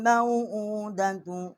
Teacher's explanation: हमज़ा जो है इसके ऊपर उल्टी पेश है, एक अलिफ जितना इसकी आवाज़ जो है वो बुलंद किया है। हमज़ा को या के साथ मुशद्दद किया है।